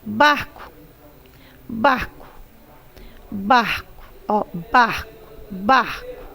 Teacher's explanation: e o bar é a sílaba tônica mas termina aí ó ela é paroxítona mas não recebe acento